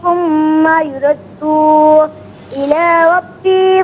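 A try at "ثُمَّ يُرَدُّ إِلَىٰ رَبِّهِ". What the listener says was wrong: اچھا، ثم یردو جو آپ نے پڑھا، دال کو کھینچ کے پڑھا، دال کو کھینچ کے نہیں پڑھیں گے، دال پر صرف پیش ہے، بغیر کھینچے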